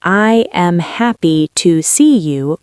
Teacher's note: with equal stress on every syllable, which is rather monotonous, isn't it? It's super boring.